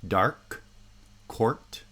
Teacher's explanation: in each case the liquid has higher sonority than the obstruent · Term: liquid obstruent coda cluster